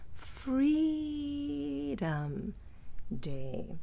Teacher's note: you notice how low my voice is going at the end of that